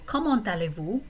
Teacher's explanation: the T of comment this time is going to get pronounced because it's leading us all the way to this next word that begins with a vowel